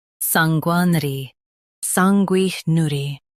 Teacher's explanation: Stress sang and keep ner light.